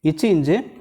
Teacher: நாவின் இடைப்பகுதி நடு அன்னத்தின் இடைப்பகுதியில் பொருந்துவதால்